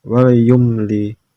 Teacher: karena mim sukun bertemu semua huruf hijaiyah kecuali mim dan ba dibaca jelas tanpa dengung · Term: idhar safawi